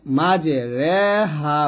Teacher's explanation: জবর এবং জেরের মাঝামাঝি একের পড়াকে বলা হয় এমালা অর্থাৎ এখানে আছে মিম জিম জবর মাঝে র খারেজের ঋ হা